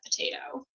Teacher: that PO is the least stressed syllable in the word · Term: weak syllable deletion